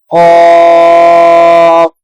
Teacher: قاف حرف مستعلیہ میں سے ہے، پر پڑھیں گے